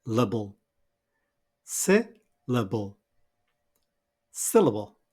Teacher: our first syllable is stressed and is marked in red. This is si. And then the second and third syllable with schwas are unstressed.